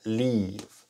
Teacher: observen que esta ea suena como una I larga